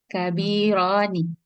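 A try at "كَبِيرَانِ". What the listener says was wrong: Oke, kabironi ya, bukan kabira.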